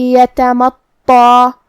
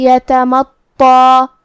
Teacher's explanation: تا اور طا کی ادائیگی ایک ہی جگہ سے ہے، لیکن حرف التا حروف الترقیق میں سے ہے تو ہم یہ حرف کو پتلی آواز میں پڑھیں گے اور حرف الطا حروف التفخیم میں سے ہے، لہذا ہمیں طا کو موٹی آواز میں پڑھنا ہوگا جو کہ اس پہ تشدید ہے، لہذا 2 حرف کے برابر ہم حرف الطا کو پڑھیں گے اور اس پہ کھڑا زبر بھی ہے تو یہاں مد الف ہوا.